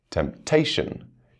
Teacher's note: you can hear the stress on the second syllable